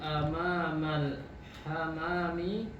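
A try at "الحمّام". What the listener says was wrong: Hammam ada tasydidnya, diulang hammami.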